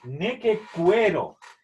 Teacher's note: La U después de la Q suena, por lo tanto es neque, cue